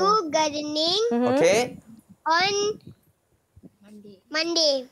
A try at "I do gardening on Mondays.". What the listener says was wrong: Be clear about the S at the back there.